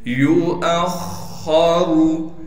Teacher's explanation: हमजा को खा से मिलाएंगे, खा को मोटा करेंगे और रा को भी मोटा पढ़ेंगे इसलिए कि रा पर पेश है